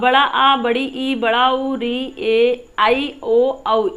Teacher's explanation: और दीर्घ स्वर क्या होते हैं, बड़ा आ, बड़ी ई, बड़ा उ, री ए ऐ ओ औ। इन स्वरों के उच्चारण में ह्रस्व स्वर की अपेक्षा 2 गुना समय अधिक लगता है